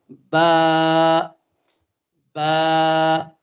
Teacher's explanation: اوپر والے ہونٹ کا جو گیلا حصہ ہے، نچلے والے ہونٹ کا جو گیلا حصہ ہے، اس کو ہم ملائیں گے تو بڑے پیار سے نکلے گا با